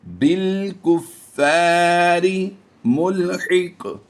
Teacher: قاف حروف قلقلہ سے اور مستعلیہ سے ہے اس لیے ہم نے یہاں پر پور بھی پڑھنا ہے اور قلقلہ بھی کرنا ہے.